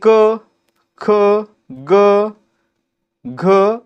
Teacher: क ख ग घ आणि हा न याच्यामध्ये काय होतं तर ख ला ह जोडल्यासारखा उच्चार होतोय घ ला ह जोडल्यासारखा उच्चार होतोय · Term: महाप्राण